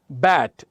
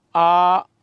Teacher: अब बैट मैंने कहा दोनों लिप्स मिल गए, लेकिन जब हम कहते हैं आ, अब दोनों लिप्स आपस में मिल नहीं रहे, ये वाउल साउंड हुई।